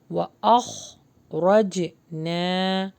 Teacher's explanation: یہاں پہ را کو بھی ہیوی پڑھنا ہے، جیم کے اوپر جزم ہے تو یہاں پر ہمیں قلقلہ کرنا ہے